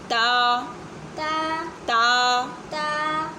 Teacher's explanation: زبان کی جڑ جب سامنے والے دو دانتوں کی جڑ سے لگتی ہے تو ادا ہوتا ہے